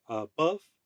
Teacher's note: an unstressed followed by a stress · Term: iambic uh foot